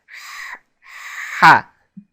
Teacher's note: letter huh in Arabic is produced in the back of the throat by constricting the throat muscles and forcing air through the windpipe